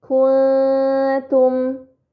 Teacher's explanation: nun sukun dibaca secara samar dengan gunah yang dipanjangkan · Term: ikhfa hakiki